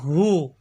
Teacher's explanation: ہا حلق کے نیچے والے حصے سے ادا ہوتا ہے